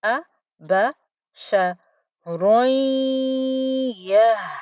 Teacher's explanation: We will imagine there's only one dhamma and we join up and over onto the ya, but we make sure that we put the ghunna there on the ya with the ya as well. So we have a ya, 50% ya, 50% ghunna.